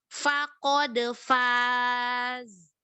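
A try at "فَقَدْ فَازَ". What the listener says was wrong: Gak kedengeran zainya lagi?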